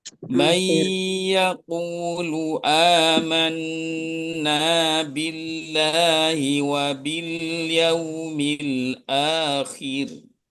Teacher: Yaitu ketika wakof ini ya, maka roknya dibaca tipis tarkik